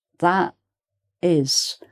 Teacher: You know the word that ends with a t, but then you don't hear it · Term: missing t